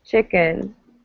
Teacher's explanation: it becomes a neutral vowel it becomes if you like the uh the phonetic alphabet it's the schwa symbol right it's the neutral vowel so chicken it's like an uh